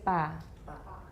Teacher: It's unaspirated. An unaspirated, unvoiced, or voiceless initial stop bilabial.